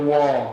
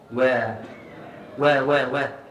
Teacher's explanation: jangan baca wa baca we nipis istifal infitah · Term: huruf wau